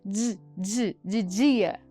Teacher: Ali nós temos um Dzinho e também um Z, que transforma essa articulação em de dia. E essa consoante, ela é considerada africada, alveopalatal, vozeada · Naquela estrutura que nós vimos aqui sobre os articuladores, sobre os lugares de articulação, essa consoante ela está utilizando dois lugares de articulação, tanto os alvéolos quanto o palato duro. E é vozeada porque eu tenho já no seu início som de voz que dá para ser percebido enquanto eu pronuncio essa consoante